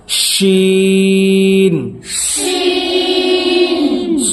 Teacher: بڑی شین کہاں سے نکلے گا؟ زبان کا بیچ اور اوپر کا تالو